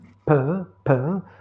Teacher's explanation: Le P, c'est une consonne occlusive, et quand vous le prononcez, P, vous n'avez pas de vibration des cordes vocales ou plis vocaux.